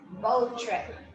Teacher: we can instead of repeating the sound, we can just make an elision.